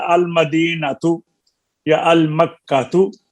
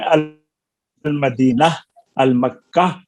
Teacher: तो गोल ता साकिन हा से बदल गई